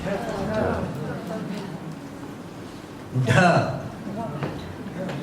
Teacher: sound is aspirated D, which is dh.